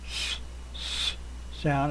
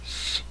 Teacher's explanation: a silent consonant with no sound vibration in the throat. It's just air, again, like a hiss